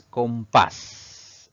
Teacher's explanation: la mayor fuerza de voz recae en la última sílaba contando de derecha a izquierda es una palabra aguda y vamos